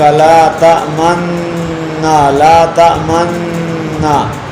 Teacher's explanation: اشمام غنہ کرتے کرتے ہونٹوں کو گول کرنا یہ واجب ہے